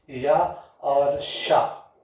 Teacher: या और शा जो होते हैं ये भी किस में आते हैं, आपके तालव्य में आते हैं।